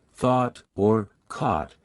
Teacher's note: Round your vowels. British RP tends to have rounded vowels. Especially in words like thought or caught, which are pronounced with a rounded sound.